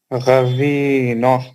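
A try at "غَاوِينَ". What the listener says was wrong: गवीना नहीं है वो, गवीना नहीं है, सही पढ़िए। नहीं है, खड़ा जबर है, जबर नहीं है, खड़ा जबर है। غوینا کیسا پڑھتے؟ غاوینا. غاوینا میں کتنے ایٹم ہیں؟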